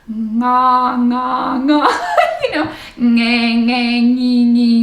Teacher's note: they have this ng sound before vowels